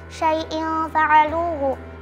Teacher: Yang ketiga, ikhfa haqiqi pada kata syai'in fa'aluhu karena ada kasrah tanwin bertemu dengan huruf fa dibaca mendengung atau samar